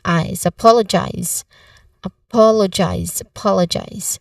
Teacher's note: It sounds like eyes, but with a buzzing sound instead of hissing. There's a diphthong here, I.